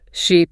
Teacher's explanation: The long vowels, like the E in sheep or beat is just, longer. So when I say sheep, I should really stretch that E sound out a bit more than in ship.